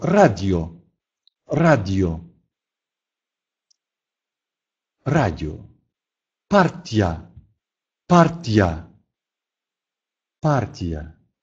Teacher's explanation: после некоторых согласных сочетание и + гласный произносится не мягко она не смягчает а наоборот делает предыдущий согласный твердой